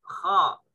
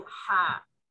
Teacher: Kha dan ha makhrajnya dekat. Ha di tengah-tengah, naik sedikit.